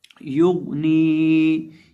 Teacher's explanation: अब यहाँ हम या के साथ गौन को मिलाएंगे, या को गैन के साथ मिलाकर पढ़ेंगे और गैन को मोटा करेंगे क्योंकि गैन हरूफ मुस्तालिया में से है।